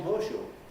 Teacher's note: very commonly there's a second stage in this assimilation and a word like horseshoe which will become hosho and that esh that you had made out of the s